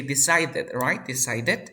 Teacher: this D is between two vowel sounds, so you pronounce like R. So you say D, Uh, decide, decided.